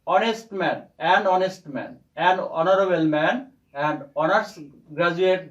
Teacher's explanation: কিন্তু এইচ এর উচ্চারণ আমরা করছি না, আমরা করছি ও এর উচ্চারণ। অর্থাৎ এইচ যদিও কনসোনেন্ট, যে এইচ কনসোনেন্ট লেটার, কিন্তু আমরা উচ্চারণ করছি ও, এই যে ভাওয়েল, অর্থাৎ ভাওয়েল লেটারের মতো উচ্চারণ করছি, অর্থাৎ সাউন্ডটা আসছে ভাওয়েলের মতো বা ভাওয়েল সাউন্ড আসছে।